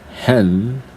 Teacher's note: for this one hen my lips are not closed when I pronounce the last sound so this one is not a bilabial sound okay and this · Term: alveolar sound